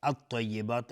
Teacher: الطیبات الف لام شمسی است و تا از حروف استعلاء غلیظ تلفظ میشه